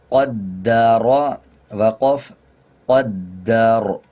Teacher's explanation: جب وقف کریں گے تو را کو پر پڑھیں گے، را کا زبر سائلنٹ کریں گے۔ جب را سے پہلے زبر آ رہا ہو تب وقف کرتے ہوئے را کو پر پڑھا جاتا ہے، اور اگر را سے پہلے زیر آ جائے تب را کو باریک پڑھا جائے گا۔